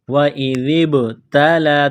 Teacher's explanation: ہیں، وَإِذِ ابْتَلَى، ذال کو با کے ساتھ پلس کرنا ہے، ذال کو پڑھتے وقت زبان تھوڑی سی باہر نکالیں گے · باہر نکالیں گے، ذال، ذال کو با کے ساتھ ملانا ہے، با ساکن ہے تو یہاں پر قلقلہ کریں گے